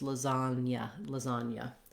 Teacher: So that ña goes together. And it's spelled with GN in this case, and the sounds are the N and the Y